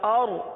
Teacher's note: را کے لیے زبان کو اٹھائیے، را کو پر پڑھیں گے، کیونکہ را ساکن سے پہلے زبر یا پیش آ جائے تو را کو پر پڑھا جاتا ہے، لہذا اس را کو پر پڑھیں گے.